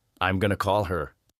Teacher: Did you notice how call her almost becomes caller?